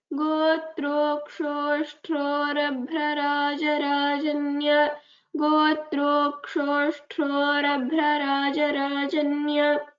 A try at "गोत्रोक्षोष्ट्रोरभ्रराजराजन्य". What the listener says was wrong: गोत्रोक्षोष्ट्रो ट्रो महाप्राणः नास्ति.